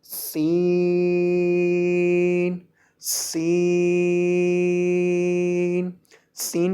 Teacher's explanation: سین کے اندر بھی سیٹی کی آواز پیدا ہوگی